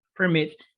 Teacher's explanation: verbos como permit, cuyo acento está en la última sílaba, permit, que terminen en una consonante.